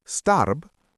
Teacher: When you have the letter B at the end of a German word, it sounds like P, not like B. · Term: final devoicing